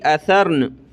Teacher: وقفاً نون کی آواز آخر میں آئے گی